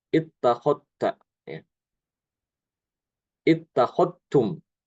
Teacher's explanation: Itu dalnya itu diidghamkan ke ta. Jadi dalnya hilang.